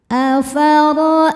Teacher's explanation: Ra dibaca secara tafkhim karena harokatnya di atas yaitu harokat fathah. Cara bacanya ra dibaca tebal.